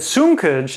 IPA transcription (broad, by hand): suŋ.kʌdʒ